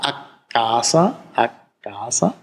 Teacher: Hier haben Sie ein anderes Beispiel aus dem Italienischen, a casa, zu Hause, a casa, und Sie haben tatsächlich eine Längung des K-Konsonanten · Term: langes K